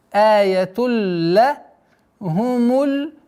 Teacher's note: Здесь у нас ассимиляция без назализации.